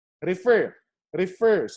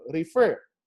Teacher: if you listen carefully to it the stress is on the last syllable or the final syllable